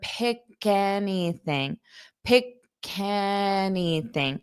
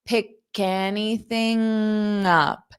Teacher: this K can sound more like it's on the A because it will link it together.